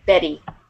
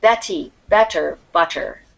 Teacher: the T often sounds like a D